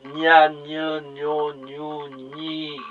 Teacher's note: 짧은 이 소리 앞에서 나는 이 니은은 좀 구개음입니다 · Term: 구개음 니은